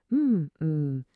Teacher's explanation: This is the letter M. M, you make it sound by putting your lips together and humming.